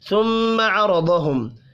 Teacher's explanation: ثم عرضہم، میم مشدد پر غنہ کریں گے، را کو اور ضاد کو پر پڑھنا ہے، میم ساکن کے بعد عین ہے، اظہار شفی ہوگا، غنہ نہیں کرنا۔